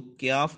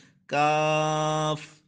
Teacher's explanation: اب جو دوسرا کاف ہے وہ سخت حصے سے، یعنی زبان کی جڑ اور تالو کے سخت حصے سے ادا ہوگا، اس کو کیاف نہیں پڑھنا، اس کو پڑھنا ہے کاف، موٹا نہیں کرنا، حروف مستعلیہ میں سے نہیں ہے، کاف۔ دوسرا جو پڑھا تھا اس کو پڑھتا قوف، اب اس کو پڑھنا ہے کاف، ٹھیک ہے۔